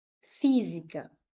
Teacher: a antipenúltima é a mais forte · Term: proparoxítona